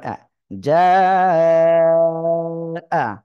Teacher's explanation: আমাদের এখানে চার আলিফ টেনে পড়তে হবে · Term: চার আলিফ মদ